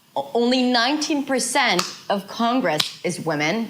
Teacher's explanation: not everything is connected. It is phrased. There is a mini break.